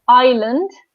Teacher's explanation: notice that I don't pronounce the S. So island, the S is silent.